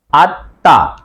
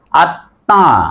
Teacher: শব্দের মাঝে বা শেষে যদি ম ফলা থাকে মর উচ্চারণ হবে না কিন্তু ম ফেলা যুক্ত বর্ণটি দীপ্ত হয় বা দুইবার হয় প্রথমবার হস দিয়ে হবে দ্বিতীয়বার চন্দ্রমেন্দ হবে যেমন দেখো তাহলে আত